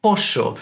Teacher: Instead, they drop the S at the end of words and have this really strong sh sound on the double L